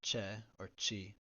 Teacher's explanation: If it's followed by or e, it makes the voiceless post-alveolar affricate, like che or chi.